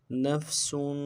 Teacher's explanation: سین کے اوپر تنوین ہے، غنہ کریں گے، غنہ کو ایک الف دار میں کھینچیں گے